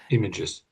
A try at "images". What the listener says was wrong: Yeah, that's it. The last one. That's it.